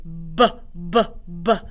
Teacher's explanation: This is like our popping sound, but remember our voice is turned on. We say b, b, b, just like a bouncing ball. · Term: bouncing sound